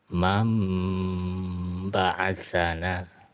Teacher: langsung nun matinya atau tanwinnya langsung masuk ke dalam huruf ba, berubah menjadi huruf mim. Mam ba'asana dipanjangkan 2 harokat. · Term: hukum iklab